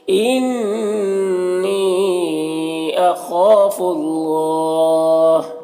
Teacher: یہاں پر اللہ کے لام سے پہلے فا کے اوپر پیش ہے تو اللہ کے لام کو پر پڑھیں گے اور یہ کھڑا زبر بھی ہے. وقف کریں گے تو ہا کا زبر سکون سے بدل جائے گا تو مد عارض وقفی ہوگا · اخاف، خا حروف مستعلیہ میں سے پر پڑھیں گے اور الف مدہ ہے، ایک الف برابر کھینچیں گے. یہاں پر اللہ کے لام سے پہلے فا کے اوپر پیش ہے تو اللہ کے لام کو پر پڑھیں گے اور یہ کھڑا زبر بھی ہے.